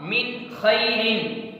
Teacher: حلقی آیا ہے، اس وجہ سے نون ساکن کو جو ہے واضح کر کے پڑھیں گے، ظاہر کر کے پڑھیں گے، یعنی غنّے کے ساتھ نہیں پڑھیں گے